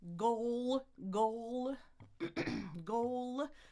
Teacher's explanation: the back of my throat is being activated there, back of the tongue. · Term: dark L